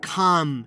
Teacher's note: the L sound which disappears before M D or K